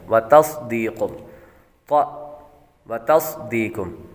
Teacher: ता बरीक और स्वाद हुरूफ मुस्तालिया में से है इसलिए इसको पुर पढ़ेंगे